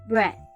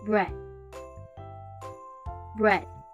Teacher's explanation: instead of ending it with the d sounds, we end it with the th sound. Straight placing your tongue at the top of your teeth.